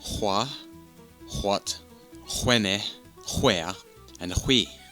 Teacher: the H is more prominent in a manner similar to how the Irish would say certain words, especially the more thicker accent of Irish.